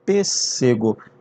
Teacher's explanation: esses dois S's que você está vendo aqui, eles se juntam e parece que tem um S só.